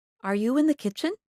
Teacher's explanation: make your voice go up at the end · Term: rising intonation